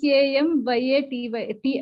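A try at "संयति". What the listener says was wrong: No, this is not M. This is not M. M is without dot, it will be M, but it has dot. That means it is the symbol for Anunasik.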